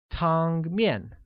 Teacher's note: Noodle soup translates as 汤面, which carries a high level tone on the first A and a falling tone on the second, making it 汤面.